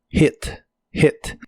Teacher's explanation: la H suena como una J suave de español y este verbo usa un sonido de la i corta